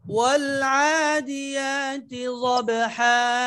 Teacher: والعاديات ضبحا বায়ে কলকলাটা নিচের দিকে, ضبحا ضبটা মোটা হবে, এটা হলো ইস্তিআলার হরফ, মোটা হরফ।